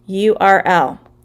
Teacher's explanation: the letter is U, but it starts with the Y sound